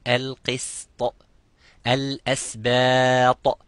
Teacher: not to make the sin mufakham as a heavy letter